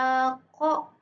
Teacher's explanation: Qo ini berada di langit-langit belakang berupa geseran majhur yaitu ee bersuara dan tebal.